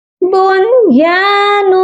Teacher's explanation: اس نون ساکن پر غنہ نہیں ہوگا ، بنیان، یا الف زبر یا کو ایک الف کے مقدار